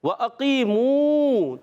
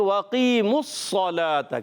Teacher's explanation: میم کی پیش ڈائریکٹ صاد سے ملائیں گے، سارے سائلنٹ ہو گئے